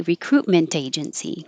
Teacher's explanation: you can connect the t to the a